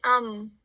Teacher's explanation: جیسے میم کے بعد آپ ایگزامپل سے دیکھیے، میم کے بعد نون ساکن کے بعد اگر با آ جائے گا تو آپ اس کو نون کی جو آواز ہے اس کو میم میں بدل دیں گے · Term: اقلاب